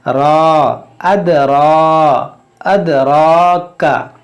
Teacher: रा पर देखें खड़ा ज़बर है, तो इसको मोटा करेंगे और 1 अलिफ के बराबर खींच कर पढ़ेंगे